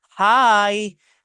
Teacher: Le mot hi ou le mot hello, généralement, ça monte un peu légèrement, d'accord? Cela donne un ton amical.